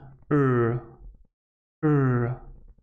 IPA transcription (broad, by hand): r